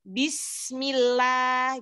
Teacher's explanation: Sin itu ujung lidah dengan gigi seri bagian bawah tipis, kasroh ya. Kasroh tipis. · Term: huruf sin